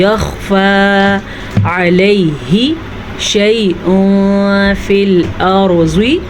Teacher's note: تنوین کے بعد فا حروف اخفا میں سے ہے تو تنوین کو ہم چھپے ہوئے غنے کے ساتھ پڑھیں گے